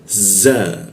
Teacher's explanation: belakang gigi dia ditebalkan